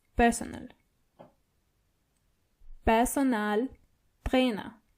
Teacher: the a in personal is more obvious than the English version